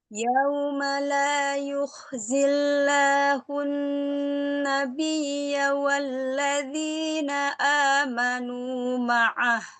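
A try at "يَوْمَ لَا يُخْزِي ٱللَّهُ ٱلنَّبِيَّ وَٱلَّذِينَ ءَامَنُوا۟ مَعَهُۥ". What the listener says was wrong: Pada saat harfulin hati-hati jangan yao ya. Yauma.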